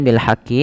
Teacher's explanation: alif lam qamariyah yang dibaca dengan jelas Suara lamnya